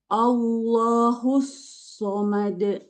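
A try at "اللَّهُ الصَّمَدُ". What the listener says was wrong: Sodnya tebal lagi. Husso.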